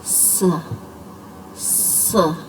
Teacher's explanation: इसको भी हम नरमी के साथ बारीकी से अदा करेंगे, और इसके भी वही दांतों की पोजीशन है और वही हमारी ज़ुबान की नोक की पोजीशन है। सीटी की आवाज़ पैदा करते हुए हमने अदा करना है